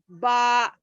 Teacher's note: बंद होठों के गीले हिस्से मिलने से बा अदा होता है। बा, होठ ही है मगर उसके अंदर का गीला हिस्सा एक दूसरे को लग रहा, बा।